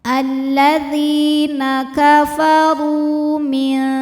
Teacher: Alladzina kafaru, hukumnya adalah matobi'i dhahiri sebab ada waw sukun yang sebelumnya berharokat dhammah, maka huruf ra kita bunyikan panjang dua harokat